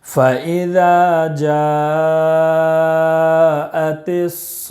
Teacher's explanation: صاد میں مد لازم کلمی مثقل ہے، اس کو 5 الف کے برابر کھینچ کر پڑھیں گے · اس کو 5 الف کے برابر کھینچ کر پڑھیں گے، اور وقف کرنے کی وجہ سے گول تا کو ہائی ساکینہ بنا کر پڑھیں گے